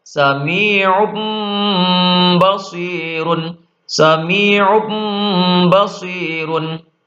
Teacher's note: nun sukun atau tanwin berubah menjadi mim dan dibaca dengung yang lama